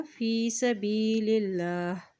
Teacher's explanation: अल्लाह के नाम से पहले ज़ेर आ गया है तो अल्लाह का नाम यहाँ पर बारीक अता किया जाएगा